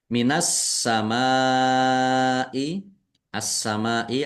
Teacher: Karena tidak dibaca langsung masuk ke ke huruf berikutnya yaitu sin ditandai sinnya ada tasdnya. Sin-nya dibaca dobel ditekan dan ditahan biar tampak dobelnya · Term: tasdid